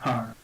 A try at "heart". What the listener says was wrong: Heart. Yeah, get the T at the end as well.